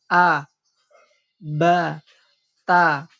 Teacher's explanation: karena tidak naiknya suara ke langit ketika mengucapkan huruf tersebut, sehingga ia dibaca tipis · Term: istifal